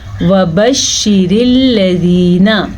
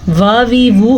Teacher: واؤ کے اوپر زبر ہے تو ہم واؤ کو لمبا نہیں کریں گے